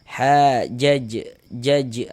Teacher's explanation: dinamakan dengan qalqalah kecil, qalqalah sughro karena dia berada di tengah kalimat.